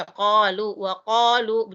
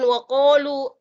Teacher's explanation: Jadi dia di tengah-tengah tenggorokan, qa di tengah. Jadi bukan o, bukan bibir yang membentuk huruf o. Tapi dia antara O dan A, ko.